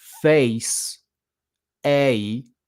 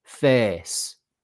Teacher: whether the word face, a, is a diphthong, or face, monophthong, a long monophthong